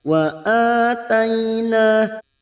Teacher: Wa ataina fathah bertemu ya sukun huruf lain kita lunakkan.